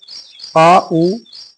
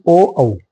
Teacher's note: जिनका उच्चारण किससे हो रहा है जीभ के पीछे के भाग से किया जा रहा है